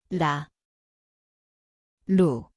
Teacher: Siin on täht. 리을, See kõlab nagu r-l koht on keeleots, kerge puudutus.